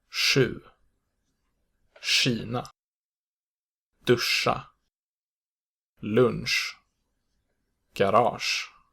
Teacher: The front SJ sound is pronounced sh, and is, as the name suggests, produced with the front part of the tongue. The technical term for this sound is a voiceless apical postalveolar fricative, but you might come across the label retroflex as well. · The main difference between the two, if such a difference at all is present, is that the Swedish sh is made more explicitly with the tip of the tongue, while the English sound isn't necessarily so.